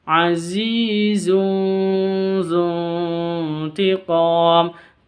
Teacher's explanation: Tanwin berjumpa dengan zal. Bacaan ikhfa, samar disertai dengung. Cara bacanya disamarkan terus didengungkan.